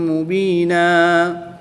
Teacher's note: دو زبر کی تنوین کے بعد میم حروف یرملون میں سے ہے تو اس پر ادغام مع الغنہ ہوگا یعنی کہ یہاں پر بھی غنہ کر کے پڑھیں گے۔ دو زبر کی تنوین کو وقف کی حالت میں الف مدہ سے تبدیل کر کے پڑھیں گے